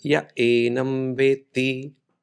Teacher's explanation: the Visarga right after Ya gets dropped and pronounced as Ya Enam Veti